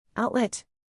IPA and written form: ˈaʊt.lɛt (outlet)